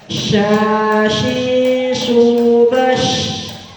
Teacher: huruf sya juga terletak pada tengah lidah dan tengah-tengah langit mulut.